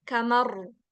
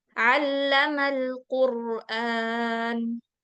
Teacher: Kalau ceritanya kita bawa ke bahasa Arab, kamar, itu ro tebalnya.